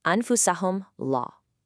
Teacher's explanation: The letter right after the silent meem is a lam. And since lam isn't a ba or a meem, the rule is just to say the meem clearly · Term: clarification